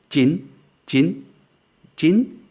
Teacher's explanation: The next number is jin, jin, and that CH sound is not a ch as in chin or a j as in jin, but it's in between. It's unaspirated and unvoiced.